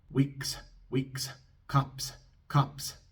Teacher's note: en la palabra weeks y en la palabra cups, la S es sorda porque la K y la P son sordas. Así que después de la S en estas palabras vamos a soplar un poco de aire.